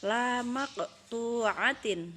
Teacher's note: dia berharakat Sukun dan dia berada di tengah-tengah kata nah jadi cara membaca Qalqalah Sugra itu adalah dengan memantulkan suara secara ringan